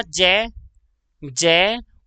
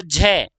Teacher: हम जब ज बोलते हैं तो वायु की मात्रा कम निकलती है और झ बोलते हैं तो वायु की मात्रा ज्यादा निकलती है